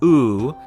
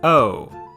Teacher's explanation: english long vowels like ooh started becoming shorter diphthongs like oh a diphthong by the way is basically a sound made of